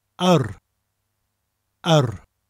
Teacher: Now, yr, spelt yr, is the word for the, and is pronounced like a, that people say when they're unsure about something. A, but with a rolling r sound after it.